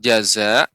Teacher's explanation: Kemudian ketika kita membaca lambat seperti mad wajib muttasil, jaza, ini jangan terlalu pendek ya, jaza panjang 5 harokat ya